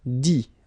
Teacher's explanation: you don't pronounce the final T